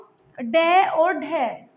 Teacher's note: तरफ जो कठोर भाग है वो हमारा यहां तालू है तो उलटी हुई नोक तालू को छूकर झटके से हट जाती है उन व्यंजनों को हम उच्छिष्ट व्यंजन कहते हैं उच्छिष्ट व्यंजन संख्या